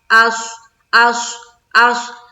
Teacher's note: हमजा स्वाद जबर अस, स्वाद को मुंह भर कर बोलेंगे, मोटे हरूफ में से है। अस नहीं बोलेंगे, अस अस अस अस।